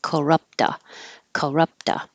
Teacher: The T in corrupt changes to a D when it connects to the A. So it'll sound like corrupta.